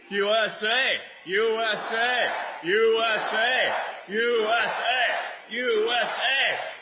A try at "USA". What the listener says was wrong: no it's the emphasis is on the wrong syllable you're right should be USA not USA